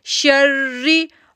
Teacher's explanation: शीन को जब रा के साथ जोड़ा तो एक तो तशदीद थी, दूसरा हमने यहाँ पर शिद्दत ज़ाहिर की और थोड़ी देर के लिए रुके भी